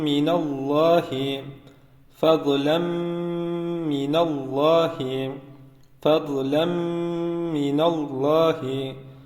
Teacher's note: zaman burad sesini duyuyoruz Bu sese gunne denir işte ne yapacağız bir ya da bir buçuk elif miktarı tutarak gunneli bir şekilde okuyacağız